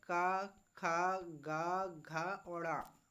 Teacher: क वर्ग का उच्चारण स्थान हमारा कहां से होता है तो कंठ से होता है